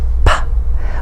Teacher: The first manner is the stop or plosive, which is made when the airflow is momentarily blocked at the site of production and then let go, as in P. We stop the airflow at our lips.